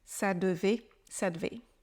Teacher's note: encore une fois les e à l'oral ils sont très souvent oubliés on les prononce que très rarement